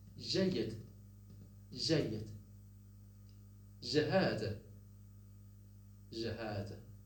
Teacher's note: So it is the palatal j, not found in Fusha, found in Lebanese.